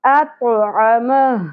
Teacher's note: وقف کی صورت میں ہا ساکن ہو جائے گی